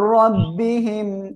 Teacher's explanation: রব্বিহিম গুন্না নাই, র মোটা করে পড়বো